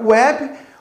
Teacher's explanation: na palavra web, o W tem som de U, né? Neste caso, ele é um fonema semivocálico, porque aí ele é uma semivogal, né?